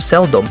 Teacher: its stress is on the first syllable in seldom